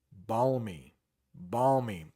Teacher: There is barely an L sound in that word.